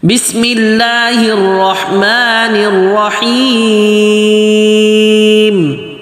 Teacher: حیم کھینچتے وقت ناک میں آواز نہیں جائے اور آگے میم واضح۔